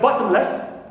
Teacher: Less like bottomless, clear. So, less is neutral and ba is stressed as usual. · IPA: /'bɒtəmləs/